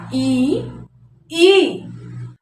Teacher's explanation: कंठ से थोड़ा सा आगे जब आप आएंगे तो उससे जो ऊपर वाला हिस्सा होता है ना, उसे तालु कहा जाता है। ई और ई का जो उच्चारण स्थान है वो है तालु।